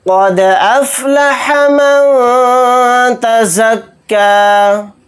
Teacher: قد دال کے اوپر جزم ہے تو دال کے اندر یہاں پر قلقلہ کر کے پڑھیں گے